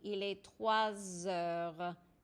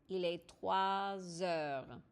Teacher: The S becomes a Z sound. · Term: liaison